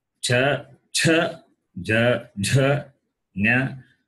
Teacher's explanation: The place of pronunciation is palate, therefore palatals.